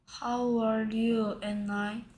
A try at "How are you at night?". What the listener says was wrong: And night의 발음이 and I처럼 들리네요. At night. How are you at night?